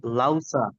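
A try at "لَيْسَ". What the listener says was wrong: লাই, ইয়ার হচ্ছে হর্ষই। হ্যাঁ, লাইসা। এখানে যেহেতু ইয়া আছে, তাহলে ইয়ার উচ্চারণ কি আমি বলেছিলাম? হর্ষই, লাই। আর ওয়াও থাকলে তাহলে লাউ হতো, তাই না? লাউ সা এরকম হতো,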